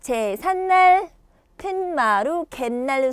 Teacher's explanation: 자, 그 다음 뒷말의 첫 소리 니은, 미음. 자, 니은, 미음 요 앞에서 니은 소리가 덧나는 거